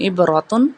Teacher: عبراتن میں اظہار بھی ہوگا اور را کو موٹا پڑا جائے گا